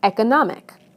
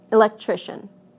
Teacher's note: listen to how the stress moves right to the syllable immediately before the suffix